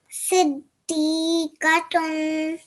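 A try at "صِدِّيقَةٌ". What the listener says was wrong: Remember to elongate for a bit longer, okay? Siddiqatun.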